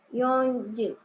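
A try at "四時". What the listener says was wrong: Yoji. Ini Yoji ya. Jadi Yoji benar ya. Jadi jangan ada n-nya. Jadi kalau di jam itu nggak ada n-nya ya. Empatnya. Jadi Yoji gitu ya. Yoji atau Yoji gitu. Kalau 4 ya itu.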